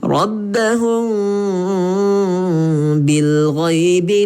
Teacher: dengung dia tu tidak rapat mulut, seolah-olah kita letak sehelai kertas di bibir kita. Macam itulah dengung dia.